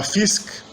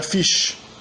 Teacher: A fase 2 vê a transformação do conjunto sk em sh. Então a gente tem o antigo germânico scarp, que significa afiado, vira scharf.